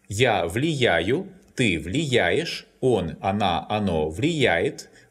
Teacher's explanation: The verb влиять, to influence, is stressed on the я. That's why it follows the common rule.